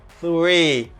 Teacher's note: Voiceless TH plus R